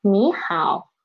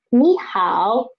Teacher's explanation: changes of the tone when two third tone syllables are read in sequence